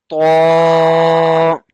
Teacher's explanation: I told you before uh, in a class, to, ta, and dal has same makhraj. We'll touch the tip of our tongue behind the up front teeth and we'll say it bold with the full mouth.